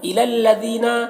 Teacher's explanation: ذال کو باریک پڑھنا ہے، یہاں پر یا مدہ ایک الف کے برابر کھینچیں۔